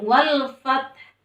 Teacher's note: fa harus ada hembusan nafas keluar dari mulut kita, karena itu salah satunya sifat hamas ya.